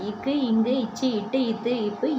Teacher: ஆறு அது வந்து மார்ப இடமாக கொண்டு பிறக்குது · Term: வல்லின மெய்ெழுத்துக்கள்